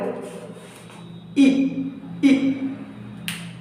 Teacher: थोड़ा सा ई पीछे नहीं खींच रहा है हल्का सा, यानी तालु। ई का उच्चारण स्थान कौन होगा? तालु।